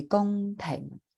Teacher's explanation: you're going very high with the gong and very low with the Peng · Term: low falling tone